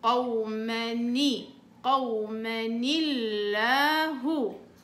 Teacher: هحول النون الساكنة في التنوين الى كسرة يعني هعطيها كسرة